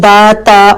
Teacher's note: دا جو ہے وہ اور تا جو ہے یہ دونوں پتلے حروف ہیں، باریک آواز ان کی آئے گی